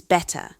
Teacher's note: Notice how removing the R sounds creates a completely different rhythm and flow compared to American pronunciation. The vowels before the dropped R often become longer or change quality to compensate for the missing consonant.